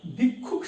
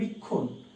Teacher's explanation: মাঝখানে শেষে ক্ষিয় থাকলে উচ্চারণ হচ্ছে ক আর খ।